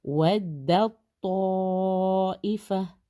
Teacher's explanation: تو یہاں پہ تا مرج ہو جائے گا تو کے اندر، اور بالکل تو کے اوپر اب دیکھیں شدہ نظر آ رہا ہے، تو اس میں تا کی بالکل آواز نہیں آئے گی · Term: ادغام